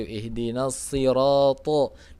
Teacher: Shad itu huruf isti'la. Sebagian besar lidahnya harus naik. Jadi ketika kasrah jadinya si.